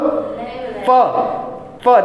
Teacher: प बोलने के लिए हमें होंठ का जो है कि स्पर्श करना होता है, यानी कि होंठ स्पर्श करते हैं और पूर्णतया स्पर्श होता है, 100% होता है उसमें।